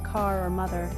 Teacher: In British English, the R is often dropped at the end of words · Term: non-rhotic pronunciation